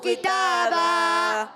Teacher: کتابن میں کاف کو باریک رکھنا ہے، تا پر کھڑا زبر ایک الف کھینچنا ہے، دو زبر کی تنوین کو الف سے بدل دیں گے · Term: وقف بالابدال